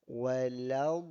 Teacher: Sebab lam nak pergi berpindah kepada dhad. Huruf lam yang hendak berpindah kepada dhad. Jadi dia agak berat sikit.